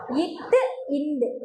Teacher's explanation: மேல்வாய் பல்லின் அடி நாக்கின் நுனி பொருந்துவதால்